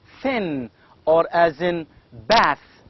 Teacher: thin is voiceless it makes no vibration there is no vibration at all